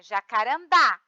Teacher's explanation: A sílaba forte é o dá, é a última sílaba. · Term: Oxítona